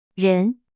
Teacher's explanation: Second tone rising starts medium and rises to high.